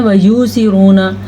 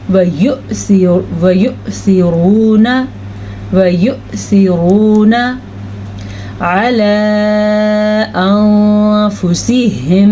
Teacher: واو کے اوپر حمزہ ہے اور حمزہ کے اوپر ساکن ہے, تو پھر یہاں پہ جھٹکے کی کیفیت پیدا ہوگی